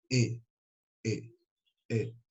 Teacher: Ele é de fundo de garganta. Ele não chega a ser um I, mas também não chega a ser um E propriamente dito.